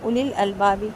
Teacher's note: اولی الالبابی، یہاں پہ اولی الالبابی نہیں پڑھیں گے، واو کو نہیں ملائیں گے، اولی پڑھیں گے، اولی جیسے اولئک پڑھتے ہیں اسی طرح اولی الالبابی۔